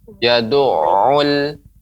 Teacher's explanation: Adapun pengucapan yad'ul, nah itu kurang menekan awalnya, ya, ainnya. Ya, ain itu awalnya dia kuat, kemudian melemah, memantul.